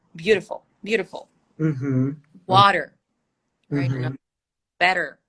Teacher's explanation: the flap t yeah it's not the r it's it reminds you the r